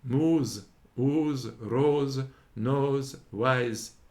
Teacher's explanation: Sometime it inclineth to Z